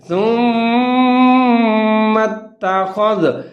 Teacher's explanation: تا کے اوپر پھر مشدد اور تشدید ہے، زبر ہے، تو میم اور تا دونوں ملا کے پڑھیں گے اور تا کو مضبوطی کے ساتھ پڑھیں گے